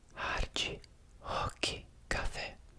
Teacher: in Brazilian Portuguese, to my knowledge, when a word starts with an R, it's not a R-r, it's a h- [panting] sound.